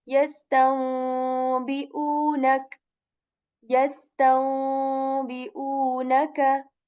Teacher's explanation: So what you will do is that because there is ba letter after noon sakin here, you will change this noon sakin, because we are doing the rules of noon sakin, into meme sound